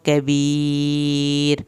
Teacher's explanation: کبیر آخر میں پتلا پڑا جائے گا کیونکہ را کے پیچھے زیر ہے. یعنی اگر را کے پچھلا لفظ دیکھا جاتا ہے، اگر ساکن ورڈ ہو تو پھر اس سے بھی پچھلا ورڈ دیکھا جاتا ہے.